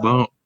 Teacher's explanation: Hujung lidah sentuh pada geraham kiri.